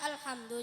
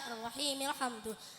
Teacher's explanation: jika di permulaan kalam hamzahnya dibaca alhamdulillah, jika di tengah kalam hamzahnya tidak dibaca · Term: Hamzah wasal